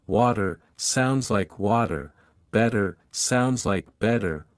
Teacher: in American English the T between two vowels often sounds like a quick D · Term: flap T sound